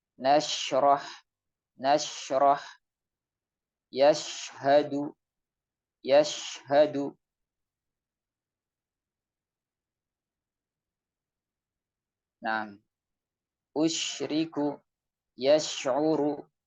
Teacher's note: ketika mengucapkan huruf shin, suara menyebar ke seluruh mulut. Ya. Sebelum kemudian keluar. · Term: tafasyi